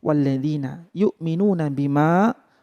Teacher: panjangnya lima ketukan atau lima harakat yang dinamakan dengan mad jaiz munfasil